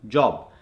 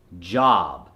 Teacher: In an Indian accent, it would come forward and be job. The American accent is going to make it job, J-A-H-B.